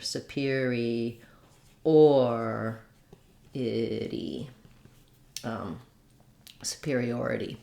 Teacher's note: when we move to superiority, we change again, and we're stressing on the or.